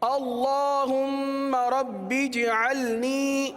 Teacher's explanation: جیم پر قلقلہ ہوگا، جیم ساکن ہے، جیم پر قلقلہ کریں گے.